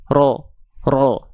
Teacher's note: ro bertumpu betul-betul pada pangkal lidah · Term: huruf tebal